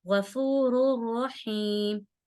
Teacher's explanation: तनवीन के बाद रॉ आ गया तो गुन्ना नहीं करेंगे, सिर्फ मिलाएंगे